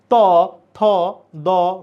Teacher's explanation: ত থ দ ধ বল বললে জিহবা দাঁতে লাগে এজন্য এই বর্ণগুলোর নাম দন্ত বর্ণ দন্ত বর্ণ এবং এই ন